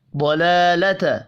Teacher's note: لام کھڑی زبر کی وجہ سے ایک الف کے برابر کھینچ کر پڑھیں گے